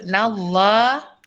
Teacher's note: lam jalala dibaca dengan tebal iaitu tafkhim 2 harokat. Lepas tu mad asliya dibaca dengan 2 harokat.